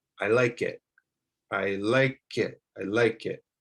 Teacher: word you have a word that starts with a vowel so you'll want to connect the k sound to the vowel sound